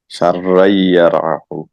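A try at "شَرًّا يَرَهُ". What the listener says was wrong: শাররাই, শাররাই, এখানে গুণনা করতে হবে।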